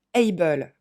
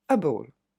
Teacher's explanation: Ce qu'on entend en fait, c'est deux sons E.